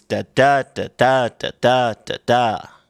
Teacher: meter is d d da d da d da you know you have an unstressed followed by a stressed